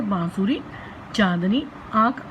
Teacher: अनुनासिक ध्वनियों के उच्चारण के समय हवा नाक और मुंह दोनों से निकलती है अनुनासिक ध्वनियों के लिए चंद्र बिंदु लगाया जाता है, जैसे बांसुरी, चांदनी, आंख आदि।